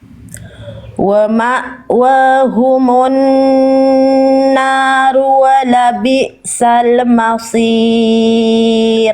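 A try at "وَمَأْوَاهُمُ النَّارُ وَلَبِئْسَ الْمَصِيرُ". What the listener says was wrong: Shotnya tinggal digeregetin lagi Bunda, angkat lagi pangkal lidah.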